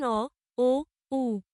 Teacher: এ জাতীয় স্বরধ্বনিগুলো জিভের পেছনের অংশের সাহায্যে উচ্চারণ করতে হয় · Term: পশ্চাৎ স্বরধ্বনি